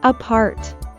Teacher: We stress on the second syllable, apart.